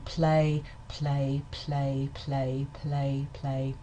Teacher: the L in play play play also doesn't have very much voicing in it. English voicing um English voiceless consonants are strongly aspirated in word initial position preceding a vowel.